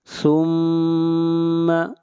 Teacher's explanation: میم کے اوپر شد ہے، غنہ ہوگا